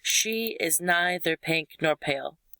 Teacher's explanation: stressed unstressed stressed unstressed stressed unstressed stressed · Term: trochaic